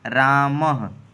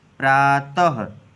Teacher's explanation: और विसर्जनीया नाम, विसर्जनीया नाम का मतलब जितने भी विसर्ग होंगे वो सब कंठ से बोले जाएंगे। जैसे रामः, ये विसर्ग है।